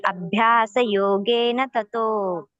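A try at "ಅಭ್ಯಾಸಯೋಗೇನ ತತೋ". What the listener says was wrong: ಅಲ್ಲಿ ಥ ಮಾತ್ರ ಮಹಾಪ್ರಾಣ ಹೇಳಲಿಲ್ಲ ನೀವು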